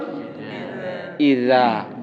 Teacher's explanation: জিহ্বার আগাটা সামনের 2 দাঁতের মাথায় একটু লাগবে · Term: জাল